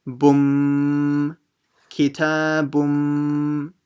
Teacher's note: So it should have been bun with a n at the end. But because of the mim with a shadda, the ba will join straight to the mim. So it becomes bum, kitabum.